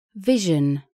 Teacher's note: кончик и передняя часть языка поднимаются к альвеолам но не касаются средняя часть языка движется к твёрдому нёбу губы округлены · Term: альвеолярный щелевой звонкий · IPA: [ʒ]